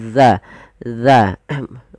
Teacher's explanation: Ujung lidah nempel dengan gigi seri atas kita. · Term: zal